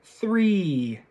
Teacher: my tongue is hitting my teeth, and I've got a very large smile when producing this E sound